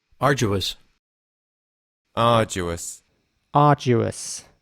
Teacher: the a at the beginning is a little longer in British English